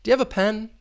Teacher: that higher pitch at the end and that intonation is going to be rising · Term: rising intonation